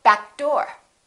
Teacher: make sure you hold that first consonant and kind of link it · don't release that k